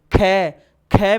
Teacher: ख में कंठ से ध्वनि बाहर निकल रही है, होंठ नहीं हो चाहे